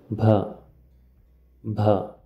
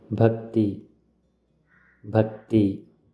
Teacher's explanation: This is the aspirated ba sound used to write Sanskrit words.